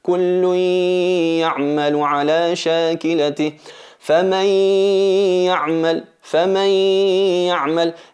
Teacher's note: Kullu no decimos kullun ya'malu, ahí es hacer la aparición, hacer el idhar, insistir en la gunna, y eso es incorrecto. Hay que fusionar la nun en el ya. No se nota el sonido del nun, pero sí está la característica de la nasalización.